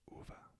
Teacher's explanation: like the vowel sound in soon, U, but much shorter